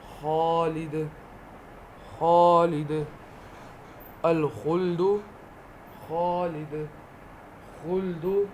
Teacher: خا حلق سے کھردری آواز، کھردری آواز مطلب کہ موٹی آواز۔